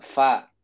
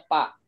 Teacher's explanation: ujung gigi seri atas bertemu dengan punggung bibir bawah